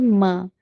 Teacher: जब दोनों होठों का सूखा हिस्सा जरा जोर से मिलकर अलग होता है तो हर्फ म अदा होता है। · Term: मीम का मखरज